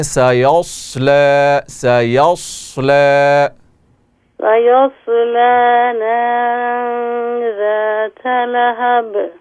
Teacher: صاد جو ہے وہ پر کر کے پڑھا جاتا ہے، فل ماؤتھ موٹا کر کے، یعنی حروف مستعلیہ میں سے ہے، تو اس کو آپ موٹا کر کے پڑھیں.